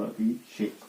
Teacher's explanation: और जैसे ये संधि करेगा तो अभी का अभी रहेगा और स की जगह मूर्धन्य स हो गया